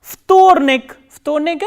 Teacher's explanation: The second day, vtornik, V, T, O, R, N, E, K, and as you can see here, there is again voiced and voiceless consonant coming together, V and T, that is why V is pronounced as F.